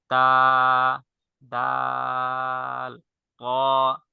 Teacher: এই তিনটি হরফের উচ্চারণ স্থান জিহ্বার আগা সামনের উপরের দুই দাঁতের গোড়ার সঙ্গে লাগে